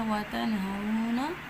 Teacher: वाव साकिन से पहले ज़बर है तो वाउलीन है, तो उसको नरमी से पढ़ना है